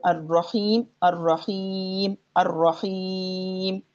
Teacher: یعنی ہم اس کو الرجیم بھی پڑھ سکتے ہیں، اتنا لمبا بھی کر سکتے ہیں، یعنی تین مقداریں ہو سکتی ہیں وقفاً ان میں